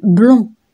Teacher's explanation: Donc pour le son on, la bouche fermée, les lèvres arrondies, la langue en arrière, et l'air passe aussi par la bouche et par le nez. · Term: voyelle nasale